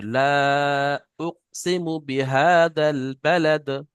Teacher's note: লা, এখানে মাদ্দে মুনফাসিল 3 আলিফ টান। আর উকসিমু এটা তাড়াতাড়ি পড়তে হবে।